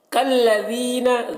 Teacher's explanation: ذال کو باریک پڑھیں گے اور یہاں پر یا مدہ ہے.